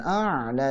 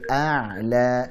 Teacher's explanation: A'la, ainnya jangan masuk hidung, jangan a'la tapi a'la.